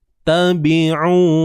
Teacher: Ni huruf ain kerongkong, bukan hidung